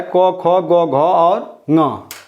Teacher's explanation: इतने सारे वर्ण जो हैं ये कंठ से उच्चारित होते हैं। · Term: कवर्ग